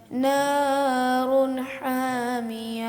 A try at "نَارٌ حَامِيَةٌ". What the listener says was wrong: نارن کو لمبا کیا آپ نے، نار حامیہ.